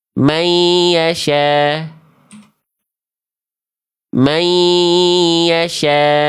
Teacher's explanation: Jadi ketika sudah lebur, sudah dikasih sengau karena dia dengung. Tahan dua harakat.